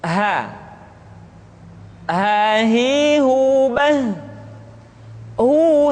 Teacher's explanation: dikeluarkan dari tenggorokan yang terjauh sama seperti kita mengucapkan huruf a